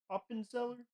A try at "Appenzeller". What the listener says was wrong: no, it's just sharper. You know, the A is a little sharp.